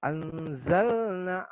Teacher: Di sini anzalna nunnya sukun. Anzalna dibaca samar-samar sebanyak 2 harokat atau kita kenal hukum bacaannya adalah ikhfa hakiki.